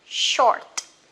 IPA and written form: ʃɔ:t (short)